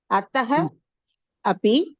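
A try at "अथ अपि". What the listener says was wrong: இருங்கோ, அத்தஹ எங்க வந்தது? அத்த அப்பிதான்.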